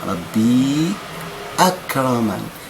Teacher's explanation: أنقل حركة الهمز إلى الساكن قبلها اللي هي الياء كانت ساكنة